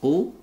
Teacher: ini adalah huruf tebal karena ada qaf yang berharokat dhamma